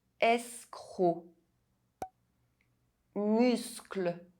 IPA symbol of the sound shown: sk